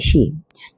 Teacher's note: ऋषि आपका मूर्धा होता है